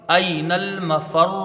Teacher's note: نون کو لام سے ملائیں گے، لام تعریف کا اظہار قمری ہوگا